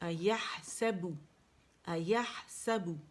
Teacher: اچھا, یاہ سبو, سین کے لیے واضح کاؤنٹ کے لیے اوپر جائے گی, سا, اور بو کے لیے کیا ہے, با میں دونوں ہونٹوں کے گیلے حصے جو ہیں وہ آپس میں پہلے ملیں گے. یہ دیکھیں میں نے, اگر آپ کو پکچر نظر آ رہی ہے با کے لیے, اور پھر اسے گول کریں گے, ٹھیک ہے.